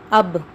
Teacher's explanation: جب ہم کہتے ہیں اب تو دونوں ہونٹ مل کر جدا ہو رہے ہیں، دونوں ہونٹ مل کر جدا ہو رہے، تو یہ ہے با کا مخرج، دونوں ہونٹوں کا مل کر جدا ہونا۔